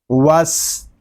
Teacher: واو سین زبر وس، یہاں الف اور لام یہ نہیں پڑھے جا رہے، ہم واو کو سین کے ساتھ ملا کر پڑھیں گے. وس، سین میں سیٹی کی آواز آئے گی کیونکہ سین حروف صفیریہ میں سے ہے